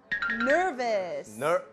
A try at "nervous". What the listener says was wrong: 발음이 nervous라고 하시는 분들이 계시는데 nervous가 아니죠? 약간 V 발음이에요.